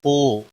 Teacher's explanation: واو مدہ ہے ایک الف کے برابر کھینچ کر پڑھیں گے